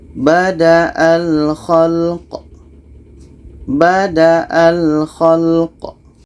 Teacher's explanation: Qaf mati ini hukumnya qalqalah. Ada pantulan.